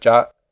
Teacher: In this example, the word ja begins with a mid-class consonant and ends with a short vowel. There is no tone marker or ending consonant, so this word would be a high tone.